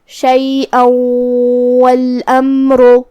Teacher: شیئا والامر کلمت والامر میں یہاں میم ساکن ہے تو ہم میم کو ظاہر کریں گے۔ آخر میں را پہ پیش ہے تو یہاں را کا حکم ہے تفخیم، ہمیں اسے بھاری آواز میں پڑھنا ہے۔